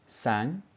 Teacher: you can feel it and hear it going starting from the front and going backwards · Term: vowel shifting